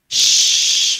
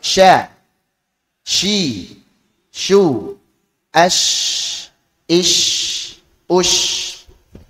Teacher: Suaranya menyebar. Jadi tersebarnya suara shin dari makhrajnya sehingga menabrak dinding dalam gigi atas dan bawah. Shh, menyebar.